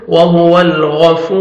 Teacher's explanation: गैन को मोटा करके पढ़ेंगे